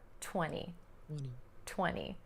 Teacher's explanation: Most Americans will drop that T right out of this word because it comes after the N or N sound.